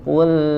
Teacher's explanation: dia Suaranya menyamping ya dari makhraj Sebenarnya ya Qul dan dia harus mengalir ya tidak boleh langsung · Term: sifat ee inhiraf